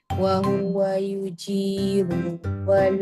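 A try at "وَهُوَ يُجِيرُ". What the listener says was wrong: a cuma ru hati-hati ru pendek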